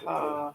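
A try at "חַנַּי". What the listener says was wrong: Ha, nai, not cha, ha, nai, or ha, rai, sorry.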